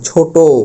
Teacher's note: বাংলা ভাষায় বেশ কিছু বিশেষণবাচক শব্দে শেষে যে অটা আছে সেটা ও এর মত উচ্চারণ হবে